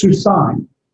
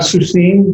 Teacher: It's like an AIM ending. It's a diphthong. So it's not 2 different vowels. It functions as 1 vowel.